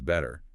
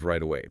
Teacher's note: When a sharp T sound falls between two vowel sounds and the second vowel is unstressed, the tongue doesn't forcefully release the T. It just quickly, lazily taps the roof of the mouth. It transforms the sharp T into a very soft, quick D sound. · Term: flap T